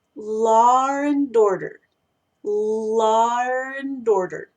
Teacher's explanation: Muchas palabras que terminan con vocales en inglés británico tienden a agregarle una R como terminación del sonido. Así que esa es una R intrusa que se mete porque no existe, no debería existir en esa situación, pero se usa a modo de facilitar la pronunciación y la conexión, en este caso, entre esta palabra y esta otra palabra.